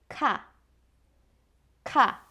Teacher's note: this type of consonant is called aspirated consonants, which means it has a wind sound in its pronunciation. That is why it sounds like ka, ka.